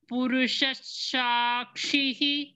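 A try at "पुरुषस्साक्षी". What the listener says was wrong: க்ஷிஹி கிடையாது பகினி சாக்ஷிதான் சாக்ஷி கிடையாது சாக்ஷி சாக்ஷி சரஸ்வதி சரஸ்வதி சொல்ல மாட்டோம் இல்ல அதே மாதிரி சாக்ஷின்னு சொல்லணும் புருஷ சாக்ஷி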